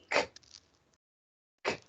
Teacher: La letra K suena K, K, y ahí no hay voz tampoco.